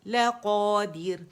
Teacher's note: اور کیونکہ را کو ہم یا اگر روانی میں پڑھیں گے تو ہوگا لقادرن، موٹا را پڑھا جائے گا، لیکن کیونکہ یہاں ہم وقف کر رہے ہیں نا، سب وقف کے ساتھ پڑھ رہے ہیں، تو را باریک ہو جائے گی. کیوں؟ را ساکن سے پہلے کسرہ آ رہی ہے دال کے نیچے